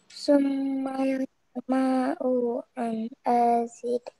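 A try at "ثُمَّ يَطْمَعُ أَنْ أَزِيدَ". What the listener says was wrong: Panjangkan, nak, karena di sini mat arid sukun beserta qalqalah. An azid. Ulang lagi, nak.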